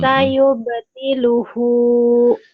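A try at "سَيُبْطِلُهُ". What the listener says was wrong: Sayubtiluhu, dihentikan jadi sayubtiluh ya.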